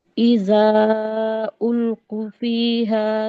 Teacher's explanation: ऊ पे मद्दे असली नहीं हुआ, बहुत जल्दी हो गया।